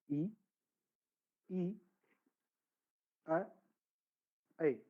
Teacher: जीभ के अगले भाग से बोला जाता है अग्र स्वर